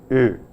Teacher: His name was Goethe, and in pronouncing the name of this dramatist, the vowel involved, the first vowel, namely Ö, is a vowel which is a front vowel but said with lip rounding. So you say A, but with lips rounded, you produce an Ö.